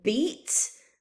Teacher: beat, that's more on the tip of the tongue, on the front of the mouth